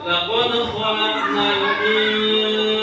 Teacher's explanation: Nun mati bertemu dengan huruf sin, maka harus dibaca ikhfa.